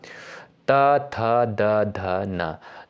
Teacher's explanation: त थ द ध न तो इनका उच्चारण स्थान कहां से होता है दंत से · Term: त वर्ग